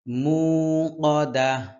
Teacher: শেষে হা এই গোল হা এর মত উচ্চারণ হবে